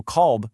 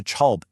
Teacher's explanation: So, the word for minute, daqiqa, becomes dagiga. And the kaf or k sound frequently softens into a chi · the kaf or k sound frequently softens into a chi. So kalb, meaning dog, turns into chalb in everyday conversation.